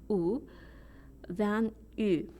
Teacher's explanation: sing it's okay if U is a little rounded in fact many singers and conductors prefer a little rounded ooh